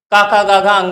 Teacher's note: का उच्चारण स्थान कंठ से